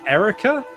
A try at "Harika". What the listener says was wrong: No, you shouldn't call me Erica. It's Harika with an H. It's Harika, just Harika.